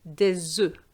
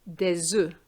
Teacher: And the S is going to be linked to the O, and this is going to give you a Z sound